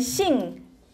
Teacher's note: tone 4, it's a high falling